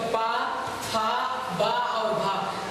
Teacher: तो पा वर्ग का उच्चारण स्थान क्या है, ओष्ठ